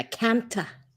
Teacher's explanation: They pronounce the O's and the A's differently to English. And when they say the word can't, they add an A syllable at the end